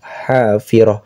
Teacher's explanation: ta marbutah ta ada titiknya dua ketika berhenti maka berubah menjadi ha sukun